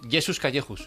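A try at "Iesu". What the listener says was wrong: No, sería Yesu, si acaso Yesu, sin la S final.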